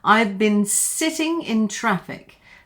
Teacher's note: now been gets shortened to Bin.